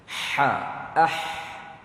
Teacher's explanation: Yani pertengahan halkum, pertengahan kerongkong kita. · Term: huruf ha